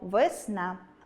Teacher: Наголос падає на [a], а звук [е] ненаголошений, у слабкій позиції, а отже, у вимові наближається до [и], і врешті ми чуємо вИсна.